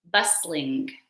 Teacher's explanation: So the T in this adjective is silent. So we don't pronounce the T.